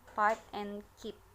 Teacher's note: the P is not aspirate in its final position P, as in words pipe and keep